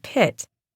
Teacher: In word initial positions, P is pronounced with more expelled air. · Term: aspiration